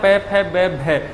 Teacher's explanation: पै का यदि हम उच्चारण करेंगे या पै फै बै भै इनमें से किसी का भी यदि उच्चारण करेंगे तो हमारे जो बाहर के जो होठ हैं, दोनों हमारे जो बाहर होठ हैं उन दोनों में क्या होता है, आपस में टकराते हैं, आपस में क्या होता है, स्पर्श होता है, आपस में क्या होता है, स्पर्श होता है।